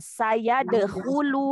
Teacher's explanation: huruf ya ada di tengah lidah ketemu dengan langit tengah